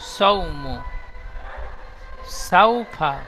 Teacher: ওয়াও সাকিনের ডান দিকে জাবার এসেছে, একে ওয়াউলিন বলে। ওয়াউলিন সর্বদা নরম আওয়াজে তাড়াতাড়ি পড়তে হয়, টান দেওয়া নিষেধ। মিমের উপরে পেশ এসেছে, পেশটি হারাকাত, হারাকাত তাড়াতাড়ি পড়তে হয়, টান দেওয়া নিষেধ।